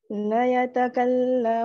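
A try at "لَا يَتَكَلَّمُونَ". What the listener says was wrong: La. Panjang itu.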